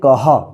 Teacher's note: इसका उच्चारण ह होता है, यानी अक्षर के बाद ह उच्चारण करेंगे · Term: विसर्ग